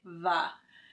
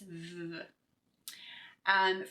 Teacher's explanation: the sound of V, which is voiced. So you're going to feel that vibration of your voice box, but you want to make sure that, again, that you don't add the schwa and make it va.